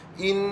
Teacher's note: In, dengan bagi cukup nun syaddah, wajibal gunnah